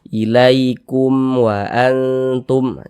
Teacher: maka dibaca jelas tak berdenggung jadi baca pendek saja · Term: izhar syafawi